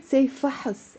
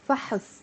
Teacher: whenever we have one syllable words in Arabic like fast it's really difficult to say that's why even us as native speakers we end up adding a sound to make it easier to pronounce